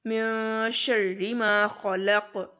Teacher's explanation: خا اور قاف دونوں بہت موٹے پڑھے جائیں گے، اور اس میں بھی اینڈ پر قاف پر قلقلہ کریں گے، من شر ما خلق۔